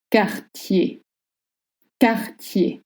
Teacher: you don't voice any R sound at the end, even if you see one.